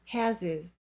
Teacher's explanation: We keep the H in has because has is the main verb and it's stressed. But the H in his is silent.